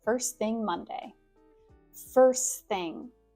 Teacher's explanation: The ST does not have to be very well pronounced.